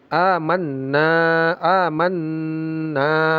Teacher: Amanna ini sebelum dibaca panjang ada tasdid dan ada ghunah. Ah, jangan lupa ghunah.